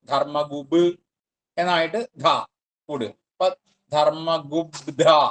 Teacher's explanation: പിന്നെ അത് അടുത്ത പദം ധർമ്മകൃത്ത് ആണ് അപ്പോ ധർമ്മഗുപ്പ് ധർമ്മകൃത്ത് കൂടി വരുമ്പോഴ് ആ ഗുപ്പ് എന്നുള്ള പകാരം ബകാരമായിട്ട് മാറും ധർമ്മഗുബ് എന്നായിട്ട് ധർമ്മഗുബ്ധ എന്ന് വരും ധർമ്മ ധർമ്മകൃത് അടുത്തത് ധർമ്മിയാണ് അവിടെ അതെ